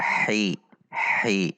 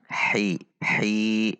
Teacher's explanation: Tidak dibaca ha, tidak dibaca hi, namun dibaca hi. Ada tekanan di tengah tenggorokan karena di situ titik makhrajnya huruf ha.